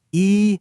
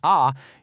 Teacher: when you say e, your tongue is high and pushed to the front. But, when you say ah, your tongue is low.